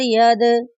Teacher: दाल साकिन है, दाल साकिन पर कलकला करेंगे